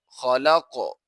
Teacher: قاف، خا جو کہ حروف مستعلیہ میں سے ہے تو اسی لیے اس کو پر پڑھا جائے گا، اور قاف حروف مستعلیہ میں سے بھی ہے اور حروف قلقلہ میں سے بھی، تو لہٰذا یہاں پر قلقلہ کیا جائے گا